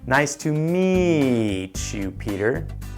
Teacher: falling intonation might be better in a business environment when you would say, nice to meet you